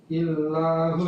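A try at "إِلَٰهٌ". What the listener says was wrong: Nah, itu enggak ada tasdid. Panjang. Ilahun.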